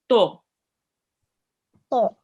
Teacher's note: you will pronounce it with a thick and heavy sound, which means you will be rounding your mouth a bit. You won't be reading it like this ta here. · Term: heavy or thick letter